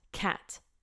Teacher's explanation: when I say cat I feel a ton of air coming out